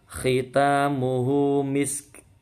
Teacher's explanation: Hati-hati, misk nggak mantul ya. Khitamuhu, kha-nya kotor, taknya panjang, dua ketukan.